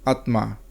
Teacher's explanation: হিন্দিতে আত্মা উচ্চারণটি অন্যরকম, আত্মা। বাংলায় ম উচ্চারণ না হলেও হিন্দিতে ম উচ্চারিত হয়